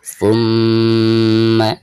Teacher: Baik, selanjutnya thumma inna 'alaina hisabahum. Perhatikan mim yang bertasydid itu sama merupakan salah satu daripada huruf guna, maka ketika membacanya itu harus ditahan 2 atau 3 harokat.